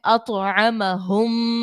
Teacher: طا حروف قلقلہ کا ہے، اور تو جو ہے یہاں پر ساکن بھی ہے، تو تو کو ہم نے خوب ظاہر کر کے ادا کرنا ہے